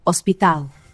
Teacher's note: In Spanish, the letters are identical, but we pronounce it hospital. The H is completely silent, and the emphasis goes to the end.